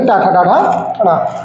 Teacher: ये वाला जो टा वर्ग पूरा होगा, इसका उच्चारण स्थान कहां से होगा? मूर्धा से होगा।